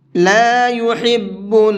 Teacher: حا کو حلق سے نکال کر کے پڑھیں گے